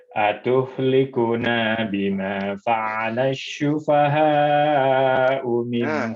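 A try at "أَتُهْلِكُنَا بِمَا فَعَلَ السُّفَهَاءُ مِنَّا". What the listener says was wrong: Huruf sin, bukan sya. sufaha. Ada tasydid.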